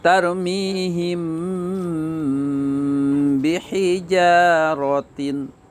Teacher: dibaca sama-samar, ikhfa syafawi, jadi mingkemnya tidak begitu. Ikhfa syafawi, yaitu mim mati ketemu ba.